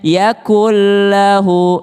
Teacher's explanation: Nun ketemu dengan lam, melebur ke lamnya. Yakullahu, langsung ke lam.